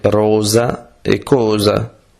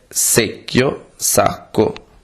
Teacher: La S sonora o dusa nelle parole rosa e cosa. La S surda o dura nelle parole secchio, sacco.